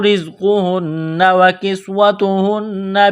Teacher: نون مشدد پر غنہ کریں گے، آواز ناک میں چھپائیں گے